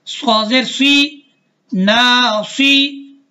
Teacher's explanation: صاد موٹے حروفوں میں سے ہے اور اس میں سیٹی بھی بجنی ہے